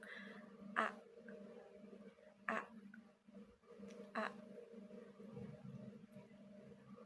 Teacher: Mulut terbuka lebar, lidah berada di posisi tengah dan agak terangkat ke belakang. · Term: fonem A